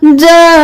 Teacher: کل فخور وخلق الجن وخلق قاف اللام قل جیم زبر الف مد نون جان. یہاں پر جا کو 5 الف کے برابر کھینچیں گے، نون کے ساتھ ملاتے ہوئے نون پر تشدید ہے، دیر بھی لگائیں گے